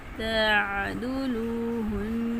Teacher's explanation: آئین گلے کے درمیان سے ادا کریں گے